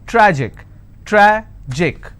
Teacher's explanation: Tragic, tragic, I will stress on tra.